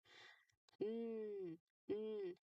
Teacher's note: There's air coming out of your nose here.